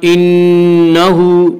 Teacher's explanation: नून मुशद्दद, गुन्ना होगा, गुन्ना की मिकदार एक अलिफ है